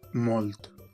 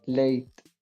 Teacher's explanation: In Latin, the consonant clusters LT and CT became IT.